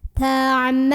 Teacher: Lu juga mad tabi'i karena ada waw sukun sebelumnya dhammah. Dibaca panjang lamnya 2 harokat.